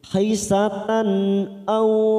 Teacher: fathah tanwin bertemu hamzah kita baca jelas tanpa mendengung